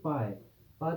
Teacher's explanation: पा तभी होगा जब दोनों होठ मिलेंगे